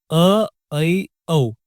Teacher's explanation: अर्ध मतलब आधा। इन स्वरों को बोलते समय आपका मुंह आधे से ज्यादा खुला होता है, यानी विवृत से थोड़ा कम। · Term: अर्ध विवृत स्वर